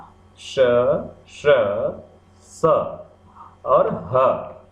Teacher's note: इनके उच्चारण में अधिक मात्रा में वायु का उपयोग हो रहा है, मुंह से अधिक मात्रा में हवा निकल रही है और अधिक श्रम भी करना पड़ रहा है, इसीलिए इन्हें महाप्राण कहते हैं।